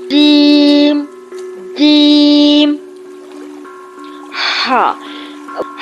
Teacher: کنارے سے تھوڑا سا آگے والا حصہ اوپر تالو کے درمیان سے لگے۔ زبان کا درمیان اوپر تالو کے درمیان یعنی تالو کے گھڑے میں فکس کرنے کے بعد پھر جیم کی ادائیگی ہوتی ہے